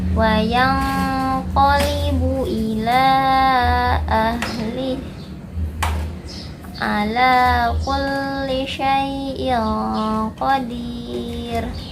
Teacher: Makhraj huruf qaf yaitu dari pangkal lidah. Pangkal lidah ya, lidah paling belakang. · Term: ikhfa